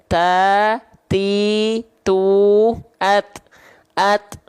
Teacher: ujung lidah kita ditempelin bukan ke giginya tapi ke gusinya